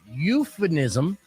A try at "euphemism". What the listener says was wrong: Isn't it with an M? Not an N. Euphemism.